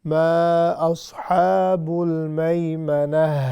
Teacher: ان پر جب بھی ہم روکیں گے تو یہ گول تا جو ہے یہ ہا بن جائے گی، تو ہم نے اس کی ہا کی آواز نکالنی ہے